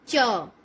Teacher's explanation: च बोल के देखिए, च। जैसे ही आपने च बोला तो हमारी जीभ कहाँ टच हो रही? तालू में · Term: तालव्य